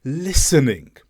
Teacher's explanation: The T should have been silent. It should have just been the S sound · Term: silent T